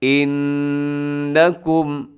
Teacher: یہاں نون مشدد ہے، آپ نے غنہ کرنا ہے، آواز کو ناک میں لے کے جانا ہے